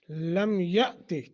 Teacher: حمزہ ساکن ہے، جھٹکا دے کر پڑھیں گے